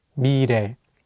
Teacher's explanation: Let's do another example with the word 미래, meaning future. Here, the 리을 consonant is between the vowels E and 에, so it will have more of an R sound. Let's say it together, 미래.